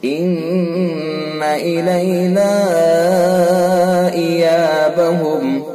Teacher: इन्ना नून हर्फ मुशद्दद, लिहाजा हर्फ गुन्ना होगा नून के अंदर